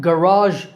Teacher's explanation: Garage in American English stress on second syllable